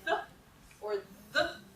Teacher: Also, it says down here, symbols to the right are voiced, to the left are voiceless. So the two TH sounds in English are the same, except for whether you vibrate your vocal cords or not. So if you say th or th, you can feel your vocal cords vibrating.